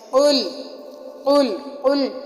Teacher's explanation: قل کے قاف کو ہم موٹا کر کے پڑھیں گے